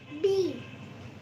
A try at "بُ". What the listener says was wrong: يا لهوي، بتبقى بيه؟ باء لما نحط عليه ضم. ضم. لما يبقى عليه ضم بنقول ايه؟